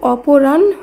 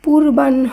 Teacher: এখানে আগে ন উচ্চারিত হয়েছে, পরে হ। এখানে মনে রাখবেন, দন্তন্য বা মূর্ধন্য দুটো ব্যঞ্জন বর্ণের সঙ্গেই যখন হ যুক্ত হবে তখন উচ্চারিত শব্দে দন্তন্য হিসাবে উচ্চারণ করতে হবে।